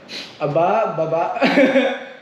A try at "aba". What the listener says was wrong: No, and then the first word, it's like oh. So, aba. You gotta make it sound like an oh. Oh, like aba.